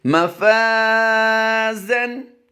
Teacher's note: मफ़ाज़न, अलिफ से पहले फ़ा आप देख रहे हैं, इस अलिफ को हम फ़ा की वजह से बारीक करेंगे लेकिन अलिफ मा कबल मफ्तू है इसलिए हम यहाँ पर अलिफ मद्दा करेंगे, यानी एक अलिफ लंबा करके पढ़ेंगे। मिकदार इसकी एक अलिफ है, यानी मैक्सिमम 1.5 से 2 सेकंड हम लंबा करके पढ़ते हैं इसको